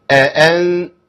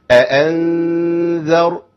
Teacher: نخلص الهمزه الاولى والثانيه وما نديش زمن زياده ونخش على الغنه على طول